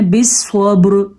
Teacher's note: हमने यहाँ पे वक्फ करके रा को साकिन कर दिया। क्या पढ़ा हमने, बिस्वब्र, लेकिन रा को हमने पुर पढ़ा है। क्यों पुर पढ़ा है, क्योंकि रा से पहले हर्फ को देखा हमने, ये क्या, ये तो साकिन है।